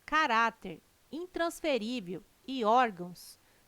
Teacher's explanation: caráter intransferível e órgãos tem sua sílaba tônica na penúltima sílaba são paroxítonas